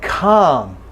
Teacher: Okay, then a word like calm, it's ah, it's clearly ah, no L.